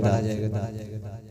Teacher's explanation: دال حروف قلقلہ ہے، جنبش کی سی آواز سے پڑھا جائے گا